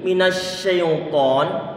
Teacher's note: Huruf sin dia itu punya sifat tafasyi. Angin perlu untuk dibuat nyebar di mulut kita ini.